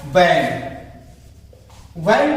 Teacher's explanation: इस वी का वा जो हम बोलना रहेगा ऊपर वाले का और नीचे वाले ओठ को मिला के, जैसे कहा गया वैन, वैन बोलना है तो ऊपर वाले दांत और नीचे वाले ओठ को मिला के हमको वैन बोलना है, वैन। और यहां पे राउंड लिप में मिलना है, राउंड लिप।